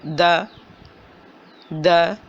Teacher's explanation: اور اب جو ہے مخرج پھر اپنی اسی جگہ پر آ گیا جہاں سے کہ تا نکالا تھا دا، دا، دا، دا۔ زبان کی نوک اوپر والے دونوں دانتوں کی جڑ سے لگ رہی ہے